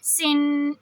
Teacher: جب ہم سن کریں گے تو نون کے لیے اپنی زبان کو تالو سے نہیں لگائیں گے، جو تنوین میں ایک نون کی آواز ہوتی ہے، سین 2 زیر، سن، یہ والی آواز۔